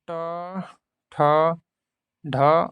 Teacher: वे ध्वनियाँ होती हैं जो मूर्धा और जीभ के स्पर्श से बोली जाती हैं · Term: मूर्धन्य ध्वनियाँ